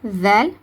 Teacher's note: ல் நுனினாக்கு மேற்பற்களுடைய கீழ் ஓரங்களை தொடுவதன் மூலமாக உச்சரிக்கப்படும்.